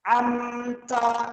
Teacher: Amta mim bertemu ta juga idhar syafawi dibaca jelas.